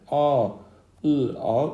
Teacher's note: A, ı, a üçü də dodaqlanmayan saitdir